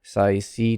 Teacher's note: C, of course, S, keep an S with your tongue pointed up toward the alveolar area.